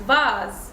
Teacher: S is gonna be pronounced Z when it's between vowels. So here it's between A and E, so it's gonna be pronounced Z.